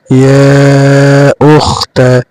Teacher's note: ইয়া তিন আলিফ টানবেন, ইয়া উখতা।